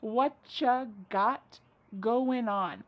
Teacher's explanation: Whatcha is what plus you. U becomes cha.